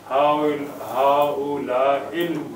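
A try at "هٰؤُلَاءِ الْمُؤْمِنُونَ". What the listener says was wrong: हां हाउलाइल मुमिनुना. लाम की आवाज जब तक नहीं आएगी मैं उसे मुरक्कब इशारी नहीं मानूंगा.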